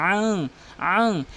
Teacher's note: নাকের ভিতর নিয়ে পড়তে হবে, গুণনা করতে হবে আং, আং। এরপরে আল্লাযীনা হুম ইউরাউন, এখানে কিন্তু র অবশ্যই 4 আলিফ টেনে পড়তে হবে।